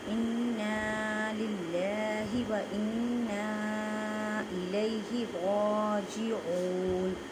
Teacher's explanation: را کو پر پڑھیں گے کیونکہ را کے اوپر کھڑی زبر ہے